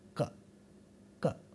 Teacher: The place of articulation for ka is this, velum. Therefore, this sound is called a velar sound.